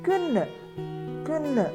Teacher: DE is a soft oo sound at the end.